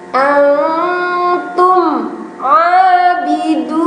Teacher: Mim sukun, depannya ada ain, disebut idhar syafawi. Dibacanya jelas ya. Wala antum tidak boleh tume, tapi tum langsung ke huruf ain.